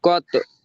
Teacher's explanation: কলকলা করে একটু ধাক্কা দিয়ে পড়তে হবে।